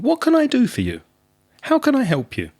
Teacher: the intonation is rising and then it falls it goes up and then it goes down